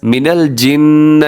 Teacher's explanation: نون مشدد ہے تو غنہ کریں گے، یعنی ناک میں آواز لے کے جائیں گے، اور والناس میں بھی نون مشدد ہے تو یہاں پر بھی غنہ کریں گے۔